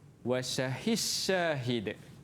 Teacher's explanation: Kalau mutaqaribain wasyahid, dal tu hilang. Masukkan ke dalam shin jadi shin.